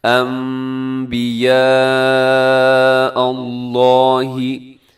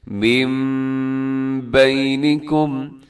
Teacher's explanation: نون ساکن کو ہم میم کے ساتھ تبدیل کر کے پڑھتے ہیں انبیاء، اور ساتھ غنہ بھی کریں، آواز کو ناک میں بھی لے کے جانا ہے، انبیاء اللہ۔ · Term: اقلاب